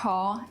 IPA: kʰɔ